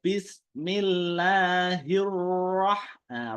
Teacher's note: Roh dialirkannya pertengahan saja, nggak usah panjang. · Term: bayinah